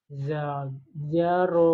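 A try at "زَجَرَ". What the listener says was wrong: Jangan dipanjangin, jangan. Zajaro itu panjang.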